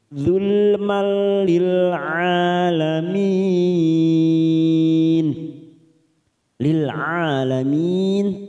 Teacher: Ridu dzulmal, dzulmal masuk pada huruf lam yang bertasdid, ada fathah tanwin pada huruf mim bertemu dengan huruf lam. namanya bacaan idgham bila gunah, hanya masuk tanpa ditekan lama-lama, tanpa mendengung. Zulmal lil alamin, lil alamin, a fathah berdiri 2 harokat, lamin mat arid li sukun 4 harokat kita panjangkan.